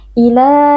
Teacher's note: Mad tabi'i karena ada alif maksurah yang sebelumnya berharokat fathah, dibaca panjang 2 harokat.